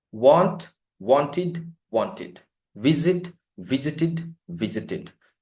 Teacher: if the verb ends with t or d, the ed becomes id or ud, but not ed.